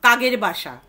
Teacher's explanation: অঘোষধ্বনি ঘোষধ্বনিতে পরিণত হচ্ছে